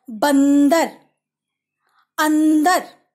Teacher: इनका उच्चारण स्वर और व्यंजन दोनों की सहायता से होता है, अर्थात ये मिश्रित रूप में होते हैं और इनका उच्चारण नाक से होता है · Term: अनुस्वार